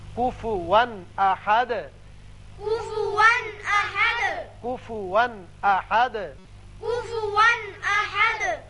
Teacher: یہاں کفوا 2 زبر تنوین ہے لیکن آگے حمزہ بشکل الف آ گیا جو کہ حروف حلقی میں سے ہے، لہذا یہاں اظہار حلقی ہوگا